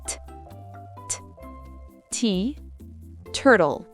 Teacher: T en anglais est aspiré au début d'un mot ou d'une syllabe accentuée comme s'il y avait un petit H caché derrière.